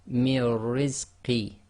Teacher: So we have one ra which is sakin, one ra which is with kasra, and we join the sound before to the first ra, which is sakin. So we just have mir, and then the second one has its own sound, ri. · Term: ra mushaddad